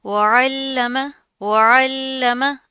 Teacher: अब यहाँ पर क्या, आइन की आवाज़ को वाज़िया करना, लाम के ऊपर तशदीद आ रही है, मजबूती से जमा कर पढ़ेंगे और लाम को आपने मोटा नहीं करना